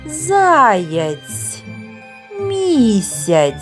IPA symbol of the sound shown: ц’